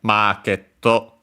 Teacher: the longer vowel for the mar, and then also the doubling of the consonant there at the end